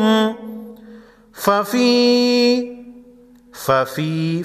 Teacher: فی یا مدہ ایک الف کے مقدار کھینچ کر پڑھیں گے، را پر زبر ہے، موٹا پڑھیں گے۔